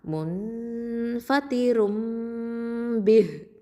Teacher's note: நூன் சாக்கினாவை என்ன பண்ணிடுவோம், மீமாக மாற்றிடுவோம். அதனால தான் அங்கே குட்டியாக ஒரு மீம் போட்டிருக்கோம். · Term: இக்லாபு